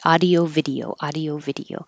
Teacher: the pronunciation audio uses ah, not ow.